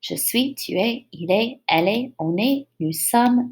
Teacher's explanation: the general pronunciation rule is that final consonants in French, like all of these T's and S's, are silent